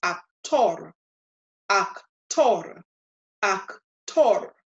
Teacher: so the stress is going to be on the last syllable